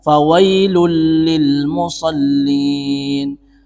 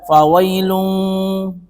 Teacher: Ada tanwin bertemu dengan lam. Ketika ada tanwin bertemu dengan lam, maka di sini hukumnya adalah idgham, tapi bukan bi gunnah, bila gunnah. · kita tidak boleh mendengungkan, harus jelas fawailul lil musallin, bukan membaca fawailun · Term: idgham bila gunnah